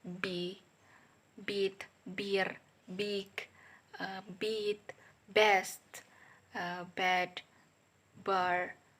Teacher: voice bilabial stop sound ba